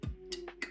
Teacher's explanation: Plosives are not typically aspirated in Gammalsvenska, as they are in other dialects of Swedish, meaning p, t, k become p, t, k.